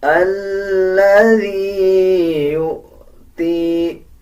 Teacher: حمزہ کے اوپر جزم ہے تو اس کو جھٹکے کے ساتھ ادا کیا جائے گا اور واو کو سائلنٹ کر دیا جائے گا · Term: جھٹکے والا حمزہ